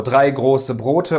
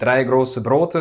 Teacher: Im Norden haben wir das französische R und im Süden benutzt man eher das spanische oder russische R.